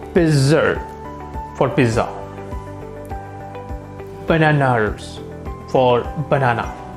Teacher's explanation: adding r where they don't belong